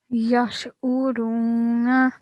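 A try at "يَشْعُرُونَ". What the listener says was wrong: Very nice. Try to pronounce the ain as well with your throat.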